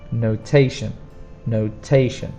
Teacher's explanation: The spelling is T-I-O-N, but the pronunciation is a sh sound, notation, notation. And also remember the stress is on the second sound, not on the last sound